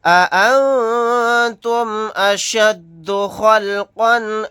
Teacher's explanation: یہاں پر نون ساکن کے بعد تا ہے، اخفا کا قاعدہ ہوگا. قاف کے اوپر تنوین ہے، تنوین کے بعد حمزہ آ گیا، یہاں پر اظہار حلقی کا قاعدہ ہوگا.